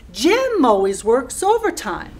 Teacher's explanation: when you start to pronounce always you put a special accent more effort to pronounce always and also over time